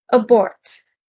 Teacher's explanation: Stress is on the second syllable.